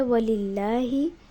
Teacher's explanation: اللہ کے لام سے پہلے والا جو لام ہے اس کے نیچے زیر لگی ہوئی ہے، جس کی وجہ سے اس کو باریک پڑھا گیا۔